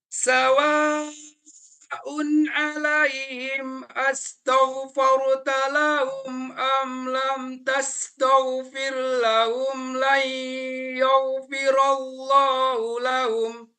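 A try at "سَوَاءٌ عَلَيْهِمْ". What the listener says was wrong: Huruf ya-nya jangan ikutan tebal. Ya, yau.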